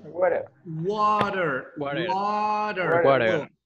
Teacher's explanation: In American pronunciation, we pronounce the T like R.